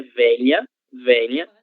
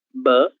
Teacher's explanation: um som um pouco mais suave, se nós compararmos ao som B, B, que é um som bilabial